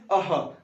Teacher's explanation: ऐसा प्रतीत होगा कंठ से इसका उच्चारण हो रहा है